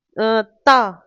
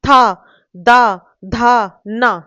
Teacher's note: आपकी जो जीभ है, वो कहां टच करेगी? दांत को करेगी। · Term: त वर्ग